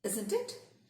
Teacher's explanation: using a falling intonation in the tag, you are simply seeking agreement.